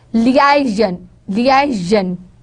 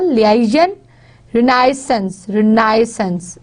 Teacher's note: They are going to put stress on the second syllable